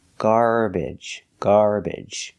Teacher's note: you can also pronounce it with the short e like eggs and bed